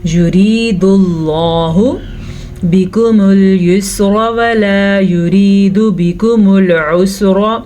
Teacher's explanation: یرید اللہ، را کو باریک پڑھیں گے، را کے نیچے زیر ہے، لفظ اللہ سے پہلے پیش ہے تو ہم لفظ اللہ کو پر پڑھیں گے